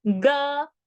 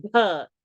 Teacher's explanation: Ga, aspirate out, you get gha